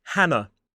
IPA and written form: ˈhænə (Hannah)